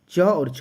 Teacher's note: तो च और जो छ है वो अघोष है तो अघोष